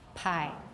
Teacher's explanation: For tie and chi, maybe you don't feel that burst of air as much, but for pi, you can all feel it. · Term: aspiration